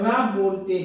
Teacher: रा को बोलते समय जीभ में कंपन होता है। जीभ में कंपन होता है। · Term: प्रकंपित व्यंजन